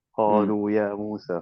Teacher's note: after the qaf has a fatha, and after the qaf is a alif, so the alif will make the fatha longer. And then the lam has a dhamma, so the waw will make the dhamma longer, and so on and so forth. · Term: natural mud